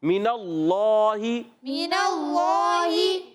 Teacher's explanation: اللہ پاک کے لام سے پہلے زبر آ رہا ہے تو اللہ پاک کا لام پر ہو جائے گا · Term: موٹا